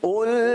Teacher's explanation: قل قاف کو پر پڑھیں گے, لام کو باریک پڑھیں گے